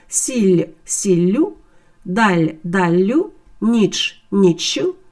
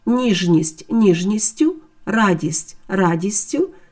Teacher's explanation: Після голосного перед закінченням ю цей приголосний подовжується тобто з одного звука робиться подовжений звук